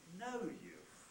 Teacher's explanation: we fall on the nucleus itself level out for the beginning of the tail and then rise at the end of the tail